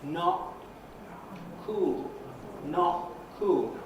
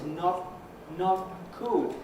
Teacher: In the case of not cool, which is what's on the screen, the vowel O stops before my mouth closes, because I'm stopping the vowel down here in the larynx, and you're hearing not cool, not cool.